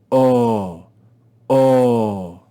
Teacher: The Greek vowel omega is read with the long sound o